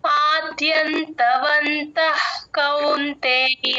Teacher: ద కింద యవత్తు ఉంది గమనించండి కౌంతేయలో ఔకారం కరెక్ట్ గా వినబడేటట్టు చూసుకోండి ఔ అన్నప్పుడు నోరు రౌండ్ గా రావాలి